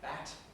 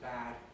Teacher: Bat has a shorter vowel because it's clipped before the T. Bad is rather longer.